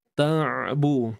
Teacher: Huruf ain ni kita sempitkan dia.